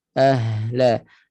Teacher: Jangan la, jangan syiddah. Jangan syiddah, jangan tahan, jangan sentak bunyi ha. · Ha ada rakhawah, suara itu dilepaskan. Ahla. Jangan la, jangan syiddah.